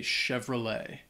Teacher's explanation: this word the spelling is not necessarily like it sounds especially the T at the end uh it's not pronounced